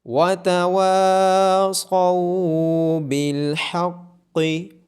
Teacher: واو کے بعد الف مدہ ہونے کی وجہ سے واو کو لمبا کیا جائے گا، صاد اور قاف کو موٹی آواز کے ساتھ پڑھا جائے گا۔